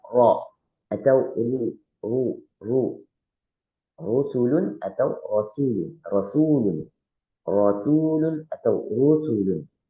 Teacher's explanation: ketika bacaan ro dibaca tebal, ro-nya itu tidak terlalu terdengar getarannya, sehingga dia ada getaran cuma sekali saja